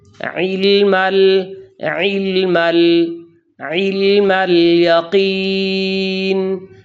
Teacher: یہاں حمزہ نہیں پڑھنا بلکہ عین ہی ادا کرنا ہے